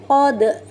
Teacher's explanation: Huruf istilla punyai sifat yang dominan yaitu jahr dan syiddah. Suara tertahan. Kemudian udaranya pun tertahan. Lalu pangkal lidah terangkat ke langit-langit yang lunak. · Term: huruf qaf